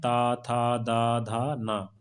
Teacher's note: ऐसे व्यंजन जिनके उच्चारण में दांतों का प्रयोग होता है या जिहुआ हमारे दंत भाग को स्पर्श करती है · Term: दंत व्यंजन